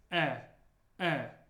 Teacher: it doesn't have the yes sound at the beginning it's just e e like in better